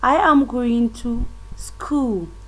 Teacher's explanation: we can see that the tune is falling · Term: falling tune